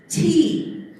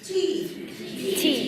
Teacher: we have an aspirated T, and it's unvoiced